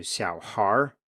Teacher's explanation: We don't say xiao haier, but instead the final E here has been dropped and the R kind of merges into the preceding syllable and changes it quite a lot